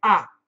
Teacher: We don't say I. Americans will say ah.